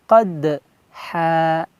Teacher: Qa huruf qalqalah halqi, qaf bertemu dal huruf qalqalah juga. Qad ada pantulan ya.